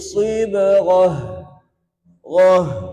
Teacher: Jadi huruf ha halqi paling bawah.